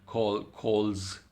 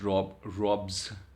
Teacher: there is a vibration of vocal cords. So these sounds are voice sounds